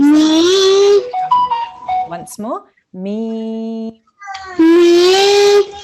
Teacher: So we will pronounce this me for 2 seconds. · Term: ya mad